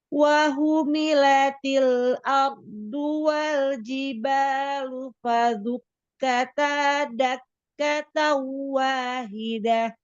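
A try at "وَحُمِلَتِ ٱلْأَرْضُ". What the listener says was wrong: Di sini ya, wahumilatil Ro-nya tafkhim atau tarkik di sini? Tafkhim ya. Ar. Ardu. Nah, di sini tafkhimkan dulu huruf ro-nya. Ardu. Ardu. Dotnya diangkat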